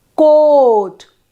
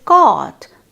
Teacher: Then I say coat, o, that is mid vowel. First we say coot, that is the U, then coat is the O, mid vowel, and then we say cot, that is low vowel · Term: back vowels